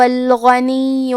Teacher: آخر میں یا پہ تشدید ہے تو ہمیں 2 حرف کے برابر یا کو پڑھنا ہے